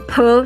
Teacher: 然后送气▁p▁的时候，你把你的手放在你的嘴巴前面▁p，▁是不是就有一口气？